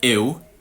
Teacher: if I say EW, ew, that's a diphthong that doesn't exist anywhere else in my accent. It's just in that word.